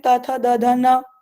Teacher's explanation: तो इन सभी का स्थान, इन सभी को हम एक ही जगह से, एक ही स्थान से बोल रहे, वे वो स्थान दंत कहलाता है। जिह्वा दांत से स्पर्श कर रही है तो इसलिए दंत्य वर्ण और स्पर्श वर्ण कहलाते हैं।